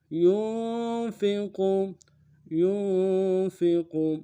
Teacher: کالذی ينفق، ينفق، یا کو نون ساکن کے ساتھ ملانا ہے، نون ساکن میں غنہ ہوگا، فا اور کو نرم سے ادا کریں گے، قوف کو موٹا ادا کریں گے۔